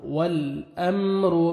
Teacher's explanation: यौमा ला تملك نفس لنفس شيئا والأمر لام کو آپ نے ہلانا نہیں ہے، ہلا کے نہیں پڑھنا، والامر نہیں پڑھنا، والامر میم ساکن کا اظہار ہے، جلدی پڑھیں گے،